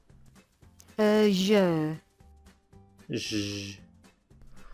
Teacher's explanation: Your teeth will be slightly clenched, and you're going to blow through with some nice vocal cord vibration. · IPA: [ʒ]